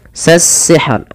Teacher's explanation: Sasihr, alif lam di sini dia namakan dengan alif lam syamsiyah, yang dimana alif lam tertulis tapi tidak dibaca dan diidghamkan ke huruf sin.